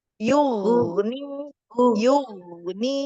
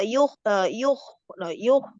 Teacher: makhraj huruf ghain itu dekat dengan kho ya, tapi dia lebih ke belakang di apa namanya, ujung.